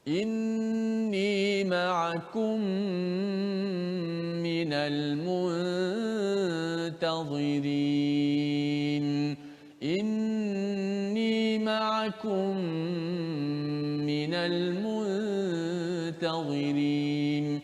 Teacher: Maka mim tu dimasukkan dalam mim, berlakulah hukum idgham, yang mana kita kena baca secara idgham dengan memanjangkan kadar gunnah tersebut · Mim mati dimasukkan ke dalam huruf selepas tu, huruf mim yang berbaris di bawah situ. Maka berlakulah hukum idgham. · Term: idgham mutamathilain